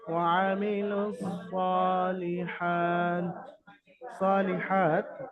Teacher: সদের উপর খারা জাবার, খারা জাবার আলিফ মাদ্দার সমতুল্য, সুতরাং সদকে আলিফ মাদ্দার মতো এক আলিফ পরিমাণ টান দিয়ে পড়তে হবে